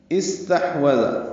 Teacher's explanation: واو ہونٹوں کی نا تمام گلائی سے ادا ہوگی